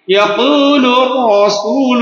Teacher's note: را کو ہم پور پڑھ رہے ہیں. را کے قاعدہ میں کیا تھا کہ لفظ را سے پہلے زبر یا پیش ہو تو را کو پور پڑھیں گے.